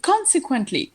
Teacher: consequently, the stress is on the first syllable